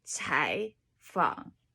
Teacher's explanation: Then the first one goes 采, the first one turns into a 2. Okay. Second tone rather than that bent third tone. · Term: two third tones